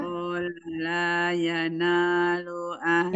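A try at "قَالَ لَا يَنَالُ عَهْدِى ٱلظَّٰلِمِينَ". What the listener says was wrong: Jangan qala, la-nya satu. Qala la.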